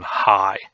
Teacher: we have the glottal fricative as in high